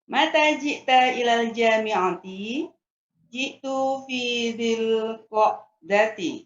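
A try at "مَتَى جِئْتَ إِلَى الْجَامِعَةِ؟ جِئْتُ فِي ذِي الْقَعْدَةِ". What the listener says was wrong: Iya, sahih. Ji'tu fi dzil qa'dati.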